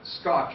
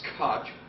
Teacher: the C is unaspirated that is scotch and not cotch and the t is aspirated